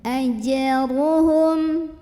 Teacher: ra-nya ini dibunyikan secara tafkhim karena ra-nya barisnya di atas dhammah, maka bacanya tebal.